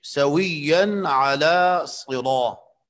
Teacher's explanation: صاد بھی موٹا پڑھا جاتا ہے کیونکہ یہ حرف مفخم ہے، اور را بھی یہاں پر مفخم پڑھی جاتی ہے کیونکہ را پر زبر ہے، اور جب حرف مفخم کے بعد وہ حرف جو پر پڑھا جاتا ہے اس کے بعد الف مدہ آیا ہو تو اس میں تفخیم اعلیٰ درجے کی ہوتی ہے۔